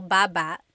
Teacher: Emphasis is on the first syllable.